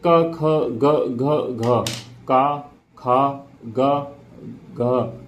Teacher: कंठ से उत्पन्न होने वाले वर्ड, कंठ का मतलब है जो हमारे गले से जो उत्पन्न होते हैं